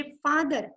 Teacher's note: आपल्याला मराठीतला फ हा ओठांनी उच्चारायचा आहे, पण इंग्रजीतला फ मात्र म्हणजे फादर असं जेव्हा आपल्याला म्हणायचंय तेव्हा दात ओठाला लागत असतात